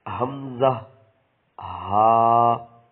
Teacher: حلق کے نیچے والے حصے سے ادا ہوتے ہیں